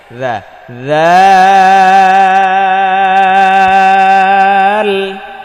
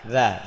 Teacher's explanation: জিব্বার আগা সামনের উপরে দুই দাঁতের আগায় লাগিয়ে